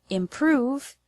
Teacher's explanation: The word improve has the stress on the second syllable, prove.